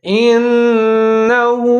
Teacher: نون مشدد ہے، یہاں پر ہم نے ادغام کرنا ہے، 3 سے 4 سیکنڈ تک آواز کو ناک میں لے جائیں گے